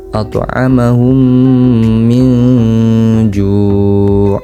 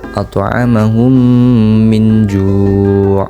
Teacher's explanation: Bacaan ini mengandung hukum bacaan ikhfa hakiki karena terdapat nun mati bertemu huruf jim dan harus dibaca dengung.